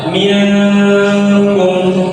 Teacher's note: pertengahan antara dibaca jelas dan dileburkan